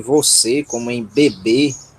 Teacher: o nosso E fechado, como se fosse um E com um acento circunflexo, como em você, né?